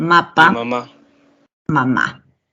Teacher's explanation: no solamente está siendo reemplazado un fonema segmental por otro, sino también hay un cambio de posición del acento